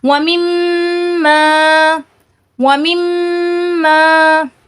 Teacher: غنہ ہو رہا ہے۔ دونوں ہونٹ آپس میں مل رہے ہیں لیکن ناک کے بانسے میں آواز گونج رہی ہے، اسے غنہ کہا جاتا ہے